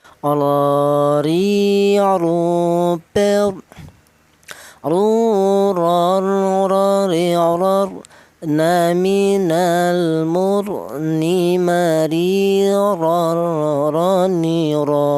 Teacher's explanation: Untuk huruf ro kanya huruf berasal di ujung lidah menyentuh langit-langit mulut